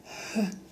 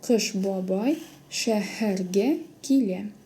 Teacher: На придыхании произносится, похоже на английский звук Х.